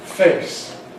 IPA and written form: feɪs (face)